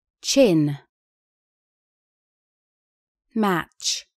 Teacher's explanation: кончик и передняя часть языка упираются в альвеолы бугорки за верхними зубами губы округлены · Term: альвеолярный шипящий глухой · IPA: [tʃ]